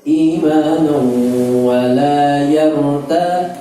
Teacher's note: Kemudian hati-hati, imanau masuk ke wawu, dia idgham bi gunnah, dengung masuk ke rongga hidung